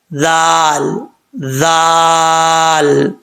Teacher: زبان کی نوک اوپر والے دانتوں کے نچلے حصے سے لگے تو زال پڑھا جاتا ہے بغیر سیٹی کے